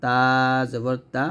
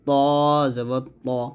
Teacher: তা টা হলো পাতলা হবে তটা মোটা হবে